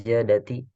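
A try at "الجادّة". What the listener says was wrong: jaddati. Dalnya itu tasdid.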